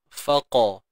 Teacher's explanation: Qa ni tebal selamanya. Angkat pangkal lidah.